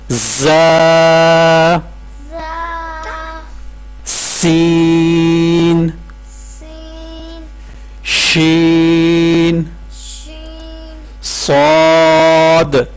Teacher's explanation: یہاں پہ آپ نے سیٹی کی آواز نکالنی ہے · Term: صفیر